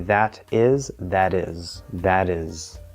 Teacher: in this case it becomes a flap D because it's American English but still we have a connection instead of that is right